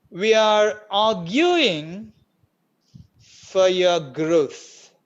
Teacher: See, are, the second word are, there, Ra is there. In again, Ra in arguing, Ra is not there in the original speech, in the native speaker speech.